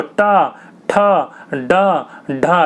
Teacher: जीभ देखिए आपकी फोल्ड होकर पीछे वाले हिस्से से टकरा रही होगी। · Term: मूर्धन्य